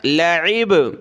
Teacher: عین کو گلے سے نکالا